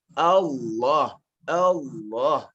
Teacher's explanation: menaikkan intonasi ya, untuk memudahkan kita menyebutkan lafaz ini